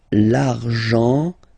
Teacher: so you've got this nasal here, en